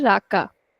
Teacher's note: what we do in Hindi language is we put equal stress in both the words or both the sounds